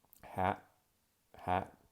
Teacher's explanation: example, if I say a word in English like hat, hat, you can hear at the end of that word that there really is an unreleased T sound